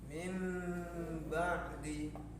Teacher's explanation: nun sukun dibaca langsung masuk ke dalam huruf mim dengan dengung atau guna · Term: iklab